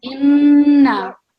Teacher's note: And again over here, so we have inna again, we have the noon mushaddad, so we are pausing and we are producing the nasal sound